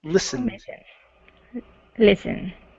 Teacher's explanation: So instead of listened, okay, short I and unvoiced S. Forget about the T.